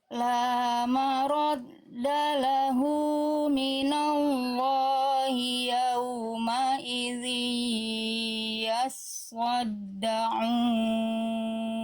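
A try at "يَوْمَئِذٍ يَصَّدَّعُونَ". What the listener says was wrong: Tebalkan shot, diangkat lagi pangkal lidahnya shotnya Bunda. Yas, so. So. Yes, so. Harus terasa diangkat pangkal lidahnya, ya. Yauma idzin yasaddaun.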